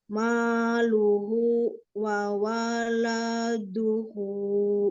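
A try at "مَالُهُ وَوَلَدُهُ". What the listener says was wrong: Nah, lanya juga jangan ke bawah, itu sampai la, du pendek semua. Enggak, itu ayunannya salah. Wa waladuhu, langsung.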